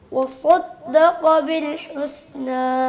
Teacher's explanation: نا میں تھوڑی سی ناک میں آواز